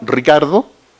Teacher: hay una vibrante múltiple canónica que en todo caso no es la realización mayoritaria